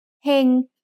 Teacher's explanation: has a low-class consonant with a live syllable ending, so it's mid-tone.